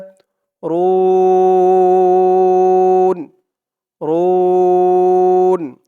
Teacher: এখানে ওকফা করার কারণে পেশের পরে ওয়া সাকিন এক আলিফ টানটা তিন আলিফ টান হয়ে গেছে